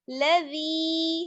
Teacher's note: یا مدہ ہے یہاں پر, ٹھیک ہے, کھینچ کر پڑھیں گے تھوڑا سا